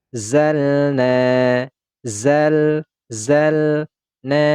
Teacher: Waza waanzalna zalna Zal Zal na panjangkan dua harakat na wazalna Kenapa huruf na huruf Nun ini dibaca panjang dua harakat Kenapa karena ada Alif kemudian sebelumnya ini berharakat fathah ada Alif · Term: Mad Thobi'i